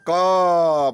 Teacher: हम क बोल रहे हैं तो कंठ से निकल रहा है ना